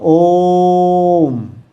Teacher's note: कैसे लगता है, तो जब हम इसका उच्चारण करते हैं तो इसको कैसे बोला जाएगा, इसका उच्चारण किया जाएगा ओम, ऐसा इसका उच्चारण करते हैं, तो इसका उच्चारण करने में दीर्घ स्वर से भी ज़्यादा समय लगता है, इसलिए इसको प्लुत स्वर कहा जाता है